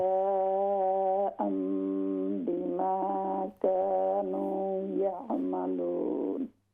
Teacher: اس جزا کو ہم تھوڑا سا اور لمبا کریں گے، چونکہ یہاں پر بڑی مد متصل آ رہی ہے